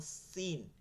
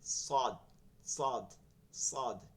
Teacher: আর যেটা জিহ্বাটার মাথাটা পুরা লাগবে আর এই দাঁতটা ওইখান থেকে অনেকখানি মিলাইয়া একদম গোড়া থেকে মধ্য পর্যন্ত লাগবে, এটা ওই যে জিহ্বাটা বেশি পরিমাণে লাগে, এর জন্য এই উচ্চারণটা মোটা হয়ে যায়। যেমন সিন, এটা একদম আগায় লাগে সিন, আর সদটা বলার সময় আগা থেকে গোড়া পর্যন্ত জিহ্বাটা মধ্য পর্যন্ত এরকম লাগে